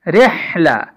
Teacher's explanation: را کے بعد چونکہ ہا ہے یہ حلق سے ادا ہوتی ہے